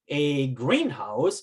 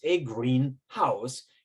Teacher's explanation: You understand the difference between the compound word greenhouse, 1 stress, as opposed to greenhouse, which is just a house that's green. That's a phrase.